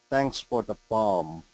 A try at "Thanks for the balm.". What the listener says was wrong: Perfect. I liked it.